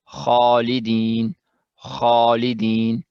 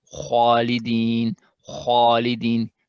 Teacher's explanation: at the end of stretch in the kha with alif, we incorporate some sound of wow for the alif